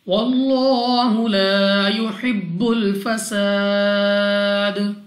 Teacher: لام اف اللہ سے پہلے حرف پر زبر، تو اس لام اف اللہ کو پر یعنی موٹا پڑھیں گے۔ واللہ، لام کو 2 سیکنڈ تک کھڑا زبر کی وجہ سے کھینچنا بھی ہے۔